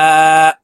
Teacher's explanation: মধ্যে মুত্তাসিল 4 আলিফ টানিয়া পড়িতে হয়। মদের হরফের উপরে মোটা চিহ্ন, বামে হামজা, মধ্যে মুত্তাসিল 4 আলিফ টানিয়া পড়িতে হয়।